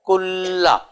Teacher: اور نون اور لام یہ قریب المخرج ہے، اور بعض مجودین کے نزدیک ہم مخرج بھی ہیں دونوں سور، اس لیے نون نہیں پڑھنے میں.